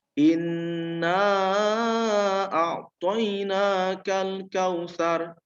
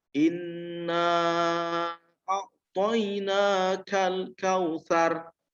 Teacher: kita punya hukum adalah panjang dengungnya adalah satu Alif atau dua harokat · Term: ghunnah